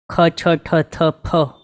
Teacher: બધામાં હવા કાઢવી જરૂરી છે, એટલે બધા બોલવા માટે મોઢામાંથી હવા નીકળે એવા છે.